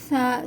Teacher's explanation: ثا کو نرمی کے ساتھ پڑھا جائے گا، زبان دانتوں کے درمیان آئے گی۔